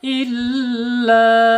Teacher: ditasydidkan huruf lam dulu ya, jangan ila